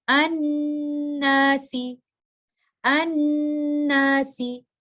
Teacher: नून शद्दा की सूरत में भी हम मोस्ट कंप्लीट गुन्ना करेंगे, गुन्ना को तवील तरीन वक्त के लिए होल्ड करेंगे। इस लफ्ज की अदायगी कुछ इस तरह से करेंगे, अन्नासी, अन्नासी।